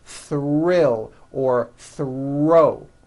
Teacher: the R is the strongest sound of the blend and is louder than the TH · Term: THR blends